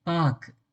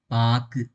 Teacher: அந்த இக்கு சவுண்டுக்கு அப்புறமா வரக்கூடிய கூ சவுண்டு முழுமையா இல்லாத மாதிரி இருக்கும். ஒரு மாதிரி அந்த கூவை ஹாஃபா நான் வெட்டி விட்ட மாதிரி இருக்கும். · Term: குற்றியல் உகரம்